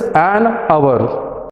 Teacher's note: when you pronounce this word hour, H becomes silent.